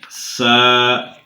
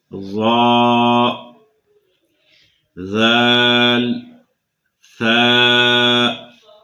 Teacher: ان میں سختی اور یہ سیٹی کی آواز ہرگز نہیں آئے گی، ان کو نرمی سے ادا کرنا ہے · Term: حروف لسویہ